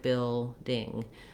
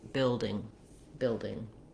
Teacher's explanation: It has first syllable stress, so I'm going to hold longer on that first syllable, bill, and then my ding is just going to be very short, building, building.